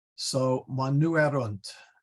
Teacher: This is a long E, erunt, and the accent goes on there.